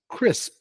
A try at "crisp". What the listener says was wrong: Let me hear the S more.